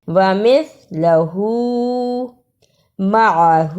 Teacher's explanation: دونوں الفاظ میں ہاں پر الٹا پیش آیا ہے، اس پہ تھوڑی سی دیر لگانی ہے